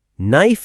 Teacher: We write the K, but we don't pronounce it. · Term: silent letters